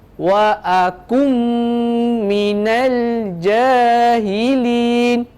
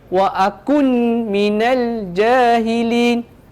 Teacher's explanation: Adik-adik perlu masukkan bunyi huruf nun ke dalam huruf mim tersebut. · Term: idgham ma'al-ghunnah